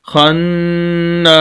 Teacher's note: تو یہاں پر نون پر بھی غنہ ہوگا، ناک میں آواز جائے گی۔